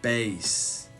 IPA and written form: beɪs (bass)